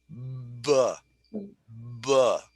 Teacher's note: when I say B, I'm using my voice and then I open my lips.